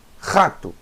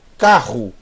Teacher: É um som gutural, é um som na garganta.